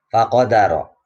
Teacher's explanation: ro-nya ro tafkhim karena berharokat fathah